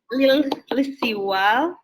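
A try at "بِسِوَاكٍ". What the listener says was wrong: Pakai kaf itu lisiwak.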